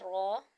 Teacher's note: را، یہ بھی حروف مدہ یہاں پر آئے گا، اس کو بھی 1 الف تک جو ہے 1 سیکنڈ تک دراز کیا جائے گا، اور یہ زبان کی نوک اور نوک کے مقابل پہ جو تالو ہوگا وہاں سے ادا ہوگا · यह जबान की नोक और नोक के मुकाबिल पर जो तालू होगा वहां से अदा होगा